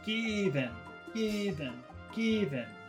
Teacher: normally I is a very short sound but here the accent falls on I so it becomes long so it's un naturally long given given given so that's long